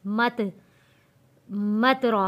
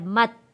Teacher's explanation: बास लोग यहाँ पर गलती कर देते हैं, ता को हिला देते हैं, मत मत रॉ पढ़ देते हैं। ता को हिलाना नहीं है। वहीं पे मीम ता ज़बर मत, जहाँ से ता पढ़ा जाता है वहीं पे अपनी ज़बान को रोकना है, मत। रॉ ज़बर रॉ, मत रॉ।